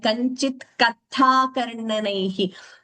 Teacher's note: you made an effort for the Mahapranas, but some places it was heard slightly like a Samyuktakshara